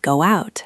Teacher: You will understand why go out has a hidden W sound in the middle.